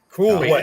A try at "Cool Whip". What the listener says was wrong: Why are you putting so much emphasis on the H?